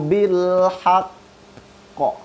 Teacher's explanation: Ketika kita berhenti di situ, maka qafnya harus qalqalah.